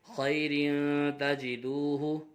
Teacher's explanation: تنوین کے بعد حرف اخفا میں سے تا آ رہا ہے، اخفا ہوگا، غنہ کر کے پڑھیں گے